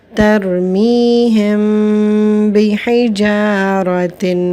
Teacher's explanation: ہم میم کو اس کے مخرج میں چھپا کر پڑھیں گے اور غنہ ہوگا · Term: اخفاء شفوی